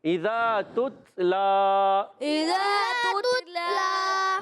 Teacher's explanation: لام پر کھڑی حرکت ہے، کھڑا زبر ہے، ایک الف کھینچ کر ادا کریں گے